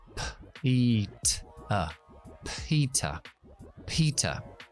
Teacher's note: Es decir, yo no activo la voz cuando digo esos sonidos. Solo activo la voz cuando digo las partes vocálicas de la palabra. Entonces, aquí diría p, no vibra, i, vibra, t, no vibra, a, vibra, p, i, t, a. · tanto la P como la T son sordas. Es decir, yo no activo la voz cuando digo esos sonidos. Solo activo la voz cuando digo las partes vocálicas de la palabra. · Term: consonantes oclusivas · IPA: /ˈpiːtə/